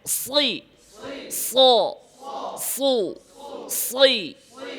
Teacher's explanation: মাখরাজ কোথায় জিহ্বার আগা সামনের নিচের দাঁতের পেট